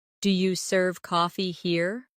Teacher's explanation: In casual speech, do you becomes dia.